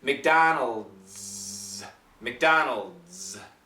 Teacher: this DS it makes a z sound so make sure you got that vibrated Z